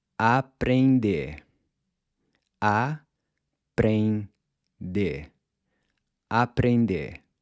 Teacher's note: the pronunciation of the “E-N”, which sounds almost like it’s got a “g” attached to the end—“eng”. And just like the “r” in “quero”, the “r” here is gonna sound more like a soft “d”.